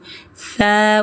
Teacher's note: ujung lidah ke gigi depan atas